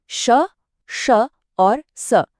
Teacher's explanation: इन्हें ऊष्म इसलिए कहते हैं क्योंकि जब हम इन्हें बोलते हैं ना तो मुंह से थोड़ी गर्म हवा निकलती है। और हाँ, इनमें भी गले में कोई कंपन नहीं होता। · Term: ऊष्म व्यंजन